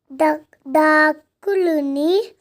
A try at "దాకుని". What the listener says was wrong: దాకుని దా దీర్ఘం ఉంది కదా బేట, దాన్ని